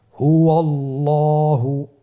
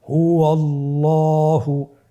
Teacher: আল্লাহ শব্দের দ্বিতীয় লামের আগেই আপনার জবর এসেছে, তাহলে আল্লাহ শব্দের দ্বিতীয় লামটিকে পোর করে পড়তে হবে